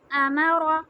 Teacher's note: حمزہ زبر آ، میم زبر ما، را، را ہیوی لیٹر ہے، اس کو ہم منہ بھر کے پڑھیں گے امر، جب وقف کریں گے تو را پہ جزم آ جائے گا، امر۔